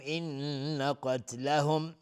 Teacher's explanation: ان قتلهم نون مشدد دو حرکت رو نمیدیم، قاف از حروف استعلا غلیظ تلفظ میشه، میم ساکن بهش کاف اظهار شفوی.